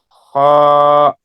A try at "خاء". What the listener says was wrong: Ho. Make it heavy. Ho. You know the articulation of ho where we do like this place. From there we have to say ho, ho, The sound should be heavy.